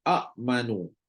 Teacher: Jadi apa yang berlaku sekarang, sekiranya berlaku juga, maka mereka akan tukarkan hamzah kedua tu jadi huruf mat. Jadi hamzah kedua tu tukar jadi huruf mat mengikut jenis baris huruf hamzah yang pertama